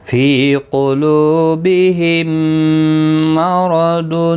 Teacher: گنہ کے ساتھ پڑھا جائے گا میم ساکن کے بعد دوسرا میم ہے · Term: ادغام شفوی